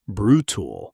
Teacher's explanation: Two syllables. Stress on the first. The second syllable often reduces to a quick unstressed tool sound.